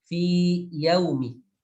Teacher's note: Karena ya yang sukun di sana adalah ya maddiyah, sehingga dibaca panjang. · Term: izhar